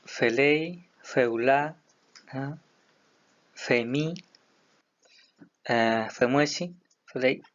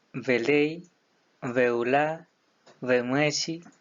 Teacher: Variantes territoriales en las pronunciaciones tales como F o V, también Z o D